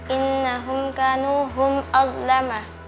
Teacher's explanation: Mim sukun bertemu dengan huruf hamzah dibaca jelas. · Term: Izhar syafawi